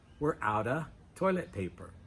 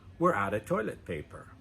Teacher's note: We don't have to say of in fast pronunciation.